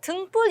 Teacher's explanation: 요 비읍이 된소리 쌍비읍으로 지금 발음이 되고 있습니다